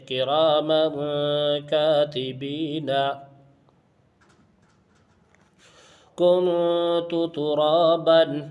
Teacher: اخفا میں سے کاف آیا ہے، اس لیے اخفا ہوگا، یعنی تنوین کی آواز کو ایک الف کے برابر ناک میں چھپا کر پڑھیں گے